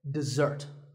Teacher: this is dessert notice that the first syllable is dip and the second starts with a Z sound we stress the second syllable